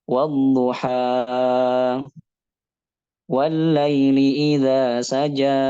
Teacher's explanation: memanjangkan mat tabi'i lebih dari 2 harokat